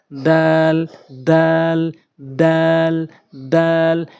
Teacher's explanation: দাল অর্থাৎ জিহ্বার আগা সামনে দুইটি দাঁতের গোড়া